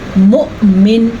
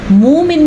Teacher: حمزہ ساکن کو ہم پڑھیں گے لیکن واؤ کو نہیں پڑھیں گے اور یہ جھٹکے کے ساتھ ہوگا